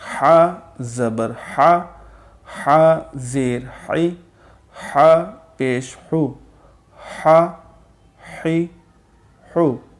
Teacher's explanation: جو اوپر والا عین اور ہا جو ہے، یہ جو ہمارا حلق ہے یہ اوپری حلق سے ادا ہوتے ہیں، عین اور ہا